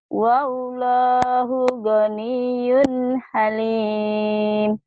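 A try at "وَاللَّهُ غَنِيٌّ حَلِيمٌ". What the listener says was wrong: Sudah bagus, cuman tinggal kalau nadanya digitu-gitu kayak ketakutan ya. Ah gitu, jadi kayak ketakutan. ayo tenang. Wallahu ghaniyun halim.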